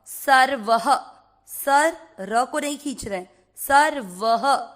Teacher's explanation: पहला चरण, स व के ऊपर आधे र की मात्रा सर व में अ मिक्स करेंगे, सर्व। व में अ की मात्रा तो विसर्ग को पढ़ेंगे ह